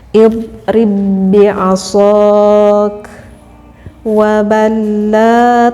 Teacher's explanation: hanya diidghamkan saja, dimasukkan, tetapi tidak boleh mendengungkan cara pembacaannya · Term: idgham mutamasilen